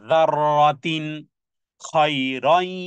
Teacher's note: তানবিনের পরে খা হলে ইজহারের অক্ষর স্পষ্ট করে পড়তে হবে